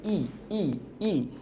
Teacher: বেশি ঠোঁট খুলে না, ই প্রায় বন্ধ, তার মানে এটা একটা সংবৃত স্বরধ্বনি।